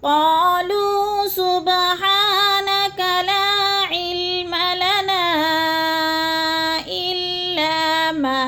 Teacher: حروف مدہ کے بعد حمزہ دوسرے کلمے میں آ گیا ہے تو مد منفصل، 4 الفی مد ہے، اس کو 4 حرکات کے برابر ہم نے لمبا کر کے پڑھنا ہے۔